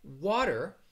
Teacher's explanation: it really sounds more like a a soft d sound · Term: flap t